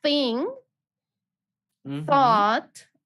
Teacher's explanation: it's a th sound and it's the voiceless th sound